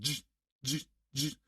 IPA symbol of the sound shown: dʒ